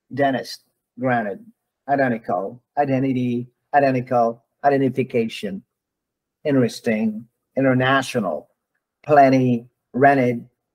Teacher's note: letter T is unstressed and is preceded by n some people some people in North America will drop the T and just pronounce the letter n